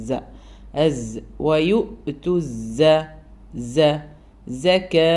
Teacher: സ പറയുമ്പോൾ എപ്പോഴും ആ സൗണ്ട് കേൾക്കണം സഫീറിന്റെ സൗണ്ട് എന്നുള്ളത്